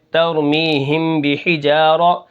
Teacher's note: را زبر را، را کو موٹا کریں گے